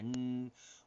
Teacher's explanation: we have n which is voiced on that Ridge we put our tongue